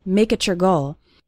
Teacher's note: can see something funny happening with the words make it your when we have a word ending in t followed by the word you or your it often sounds like a C Sound CH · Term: CH sound